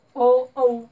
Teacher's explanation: कंठातूनही निघतो आवाज आणि ओठांचाही वापर केला जातो म्हणून कंठौष्टे बरोबर आहे अशा पद्धतीमध्ये आपलं